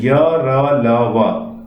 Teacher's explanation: उच्चारण के समय जिह्वा मुख के किसी भाग को स्पर्श नहीं करती है। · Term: अंतस्थ व्यंजन